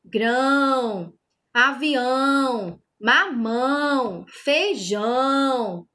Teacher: o som ele sai pelo nariz, sai pela boca, por isso que a gente chama de som nasal